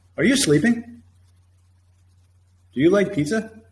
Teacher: if it's a yes or no question, that means auxiliary, subject, verb. There's no question word, no what, no where, no who, no when, or how many. Then you have a rising intonation.